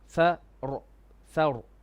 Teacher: So here the ra is going to be heavy, full mouth.